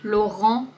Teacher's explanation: Voyelle nasale en. On ne prononce pas le T, Yves Saint-Laurent.